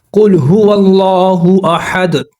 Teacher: تو 2 پیش ہوتے ہیں دال کے اوپر، تو ہم احد پڑھتے ہیں، 2 پیش کو ہم ڈراپ کرتے ہیں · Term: جزم